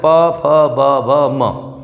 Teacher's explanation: प वर्ग के जो वर्ण हैं ये सभी ओष्ठ से बोले जाते हैं